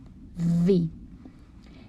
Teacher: V is labiodental and fricative.